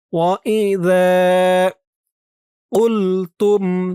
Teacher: জিহ্বার মাথা উপরের দুই দাঁতের মাথার সাথে লাগবে এই জালের উচ্চারণটা করার সময়